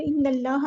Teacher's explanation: इन्नल्लाह, नून पे उन्हें ज़मानी और एक अलिफ के बराबर रुकना है, नून को हमने लाम के साथ मिला देना है, हमज़ुल वस्ल हमारा ड्रॉप हो जाएगा। अल्लाह का लाम जो हम यहाँ पे पुर पढ़ेंगे, हैवी लेटर है। इन्नल्लाह, हाँ को लंबा नहीं करना, हरकत को लंबा नहीं करते, इन्नल्लाह नहीं, मोटा पढ़ना है।